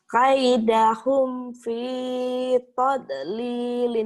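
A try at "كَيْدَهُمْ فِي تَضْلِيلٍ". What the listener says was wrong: Jangan tod atau itu mah punya Bu Atin tod. Ta dulu tablilin. Ta dulu do ya.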